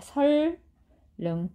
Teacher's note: 유음, 리을의 앞뒤에서 비음, 니은이 유음, 리을로 발음되는 현상이에요. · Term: 유음아